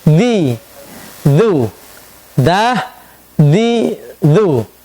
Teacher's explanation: Istifal, lidah kita mendatar, tidak terangkat.